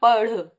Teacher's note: झटके से या पढ़ तो आपके एकदम जब मूर्धा से आपकी जीभ लगती है उसके बाद तुरंत नीचे आती है तो ये उत्क्षिप्त भी कहलाते हैं